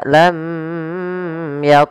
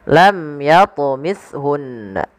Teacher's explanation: dengan izhar syafawihar sebagaimana namanya yaitu jelasay maka Apa yang dijelas suara mimnya tanpa boleh ditahan misalkan lam tidak lamun tidak tapi lam Yun kemudian